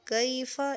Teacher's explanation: اس یا کو نہیں کھینچیں گے کیونکہ یہ لین ہے، یہ مدہ نہیں ہے۔